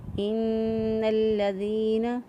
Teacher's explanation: ان الذین آمنوا، ان الذین، نون مشدد گنہ ہوگا، ایک الف کے برابر گنہ کی آواز کو ناک میں ٹھہرائیں گے اور پھر نون کو ادا کریں گے